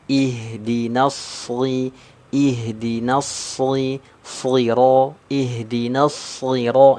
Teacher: Ini shad yang kasrah, ini kan dibaca tebal ya.